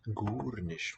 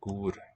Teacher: Gur nicht with the raising, not gar, gur.